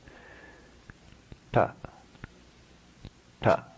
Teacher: The tongue is further back then we would be accustomed to be pronouncing a similar T sound in English. So don't confuse this with the English T.